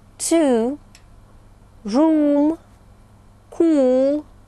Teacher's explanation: которая чаще всего обозначает звук у Обратите внимание долгий напряжённый звук у